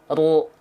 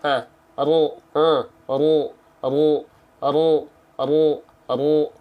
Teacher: huruf ro dilafalkan dengan cara menyentuhkan punggung lidah kita